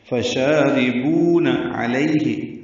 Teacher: عین وسط حلق سے ادا کریں گے. لین ہے، یہ نرمی سے پڑھیں گے.